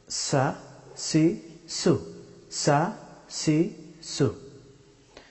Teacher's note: সিন হরফটি উচ্চারিত হয় জিহ্বার অগ্রভাগ এবং সানায়া ওলিয়া, উপরের দুই দাঁতকে বলা হয় সানায়া ওলিয়া, ঠিক নিচের দুই দাঁতকে বলা হয় সানায়া সুফলা।